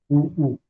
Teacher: जो आता है आपके होठ में, ऊ, होठ को गोल बना के बोला जाता है। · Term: ओष्ठ्य